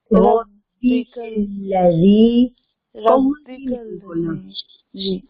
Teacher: कल्ला बारीक है, काफ भी बारीक है, लाम भी बारीक